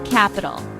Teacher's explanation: three syllable word stress is on first syllable